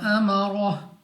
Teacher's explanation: इस मद की वजह से हमने इसको 3 या 4 सेकंड तक खींच कर पढ़ना है, लंबा करना है। रॉ पर ज़बर रॉ को पुर पढ़ेंगे, मुंह और आवाज़ को खोल कर मोटा करके और हा को वक्फ में साकिन कर देंगे।